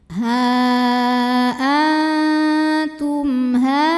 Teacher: mim sukun kita bunyikan dengan jelas jadi ini bunyinya masih bunyi asalnya yaitu bunyi m dan tidak ditahan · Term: izhar syafawi